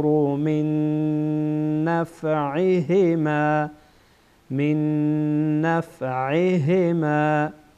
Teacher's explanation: بعد از نون ساکن نون آمده و اینجا غنه میشه و ادغام هم میشه